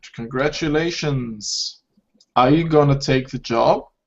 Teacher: my intonation here goes up again because yes and no question